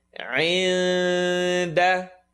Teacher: Get the ayn, second part of the throat. عِنْدَ. The tongue is not going to commit.